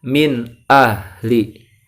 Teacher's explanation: Nah, nun sukun kalau bertemu huruf hamzah, maka suaranya nun sukun atau tanwin itu dibaca jelas, ya, tidak dibaca dengung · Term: izhar